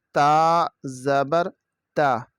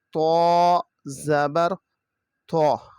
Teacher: تا کی آواز باریک ہے، جبکہ طوا کی آواز موٹی ہے